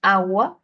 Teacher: cuando decimos agua la sílaba tónica se encuentra en la a en la primera a